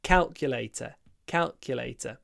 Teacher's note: the stress on the first syllable